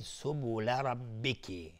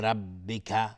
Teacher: دقت کنید سبول ربکی اینجا با کسره کاف نمیگیم ربک، نه سبول سبول ربکی.